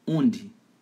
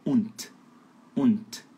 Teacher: UND, fala undi, achando que a letra D soa realmente como D, mas não soa, soa como T de tatu.